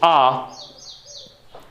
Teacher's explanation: आ के लिए जीभ नीचे, पीछे से, तो आ। इसी टाइप से ई, तो जीभ ई, और ऊ की साउंड फिर पीछे से आती है, ऊ, तो इसलिए पश्चिम में चले जाते हैं।